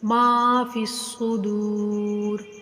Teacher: ما فی الصدور، ادھر بھی فا کو صاد کے ساتھ ملا کر پڑھیں گے. ٹھیک ہے، یہ لام اور یا بے معنی ہے، ان کے اوپر کوئی حرکت نہیں ہے، یہ نہیں پڑھے جائیں گے. ما فی الصدور، دال حروف مدہ ہے، اس کو بھی کھینچ کر پڑھیں گے.